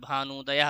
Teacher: तो ह्रस्व उ और ह्रस्व उ मिलके हमने बताया है दीर्घ ऊ होता है